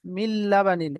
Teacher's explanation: তানবিন বা নুন সাকিনের পরে লাম এসেছে, একে ঈদগামে তাম বলে, বিনা গুণায় তাড়াতাড়ি পড়তে হয়।